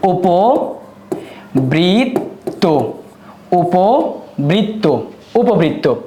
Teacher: এই মধ্য অয়ের উচ্চারণটা উকারের মতো হবে বা উবৎ হবে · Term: উকারান্ত